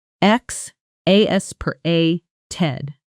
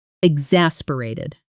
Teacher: with the strongest stress on the second syllable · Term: stress pattern